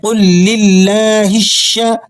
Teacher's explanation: ہا کو آپ نے شین کے ساتھ ملانا ہے۔ یہ جو بعض ساتھی ہا کو الگ اور شین کو الگ کر کے پڑھتے ہیں ایسی ادائیگی درست نہیں ہے۔